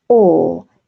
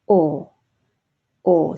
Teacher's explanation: the open jaw lips are slightly rounded and pushed forward what we call pursing if you purse your lips you're pushing your lips forward as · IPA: /ɔː/